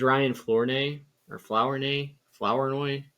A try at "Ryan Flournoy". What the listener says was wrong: Ryan Flanoy. There's no R apparently. There's not in the pronunciation.